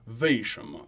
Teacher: a northerner might throw in a little v sound instead, 为什么, and it comes from the northern dialects. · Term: soft v